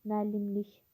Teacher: Vurğu üçüncü hecada yox, dördüncü hecadadır.